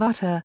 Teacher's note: Flap often called a tap is a momentary closure of the oral cavity. The tt of utter and the dd of udder are pronounced as a flap.